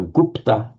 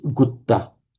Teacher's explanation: where you get a word with a p and t in Sanskrit, it just becomes a double t in Pali, which is how Gupta in Sanskrit becomes Gutta in Pali.